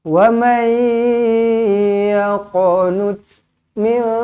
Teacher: Nun kosong bertemu kaf, ikhfa hakiki. Nun sabdu wajibul gunnah. Kedua-duanya perlu didengungkan dengan dua harakat.